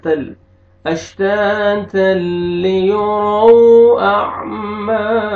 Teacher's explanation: تنوین کے بعد حروف یرملون میں سے لام ہے، تو یہاں پہ ادغام کریں گے تل، ٹھیک ہے، لیکن غنہ کے ساتھ نہیں، بلا غنہ